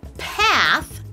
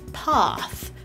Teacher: /æ/ has the tongue in the front. Whereas /ɑ/ has the tongue in the back.